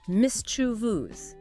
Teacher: It's mischievous. Stress on the first syllable.